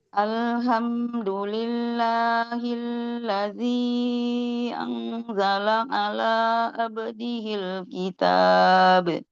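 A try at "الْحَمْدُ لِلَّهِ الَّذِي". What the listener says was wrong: Ibu hati-hati tertukar. Alhamdu. Yang depan alha. Ya, jangan tertukar sama ha. Alhamdulillahilladzi.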